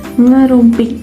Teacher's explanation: Jadi seperti ada penekanan ya, lidah itu berada di langit-langit dan udara nanti keluar melalui hidung.